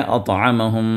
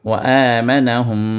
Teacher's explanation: اور پھر اس کے بعد میم پر شدہ آ گیا۔ تو میم ساکن کے ساتھ میم پر جب شدہ آ گیا تو یہاں پر میم پر غنہ کرنا ہے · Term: ادغام مع الغنہ